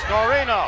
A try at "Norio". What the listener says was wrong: And you said Norino when there was clearly no N before the Y or the last O.